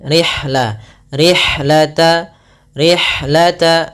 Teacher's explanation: alirkan nafas pada lafal ha karena ha memiliki Salah satu sifat yaitu sifat hams